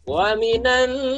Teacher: Di situ ada nunnya bertasdid. Waminan. Kita tahan sebanyak 2 harokat.